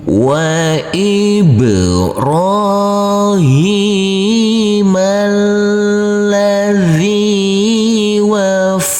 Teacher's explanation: Huruf fa kita tekan dan kita tahan saja dengan 2 harokat. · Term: tasydid